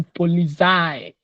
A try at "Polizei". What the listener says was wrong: Polizei. CS, not Sei. Polizei.